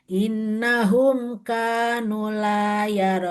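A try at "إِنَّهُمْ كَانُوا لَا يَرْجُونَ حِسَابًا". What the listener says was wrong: kanu panjang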